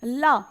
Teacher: ला को हम कहते हैं पार्श्विक व्यंजन